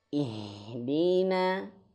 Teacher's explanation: Huruf H dia makhrajnya di pangkal tenggorokan